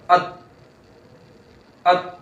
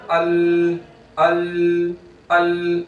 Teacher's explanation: اگر لام ساکن ہوگا تو اب یہاں آواز اور سانس بند نہیں ہو جائے گی، ال، حمزہ لام زبر ال، ایسے نہیں، بلکہ یہاں آواز جاری رہے گی.